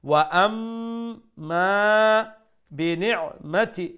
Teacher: make sure you pronounce the ayn from the middle of the throat